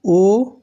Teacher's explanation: दीर्घ स्वर इसलिए कहते हैं क्योंकि इनमें जो है दो मात्रा का समय लगता है।